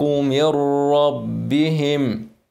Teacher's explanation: قلنا نون مش عليها تشكيل بعدها حرف ايه مشدد يبقى ده ادغام كامل مع الراء يبقى من غير غنه ما فيش غنه خالص ولا نون من